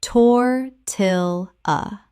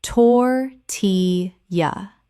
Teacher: Three syllables with the L L making a Y sound as in Spanish.